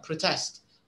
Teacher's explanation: So the second syllable should be stressed, protest. A protest, this is the noun itself. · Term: syllable stress